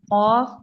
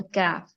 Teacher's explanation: एक कौफ मोटा होता है उसको आपने मोटा करना है और दूसरा कफ जो है वो बारीक होता है उसको आपने बारीक रखना है